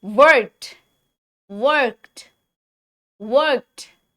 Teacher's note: ईडी की आवाज इसमें आएगी ही टी के जैसी। के बोलिए पहले, के बोलिए, के कोई वॉइस यहाँ पे कोई वो आ रही है आवाज, वाइब्रेशन की आवाज आ रही है, नहीं आ रही है।